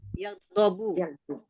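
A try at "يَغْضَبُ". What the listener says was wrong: Oh, yakdabu, bukan yakdubu ya. Ghadaba yakdabu.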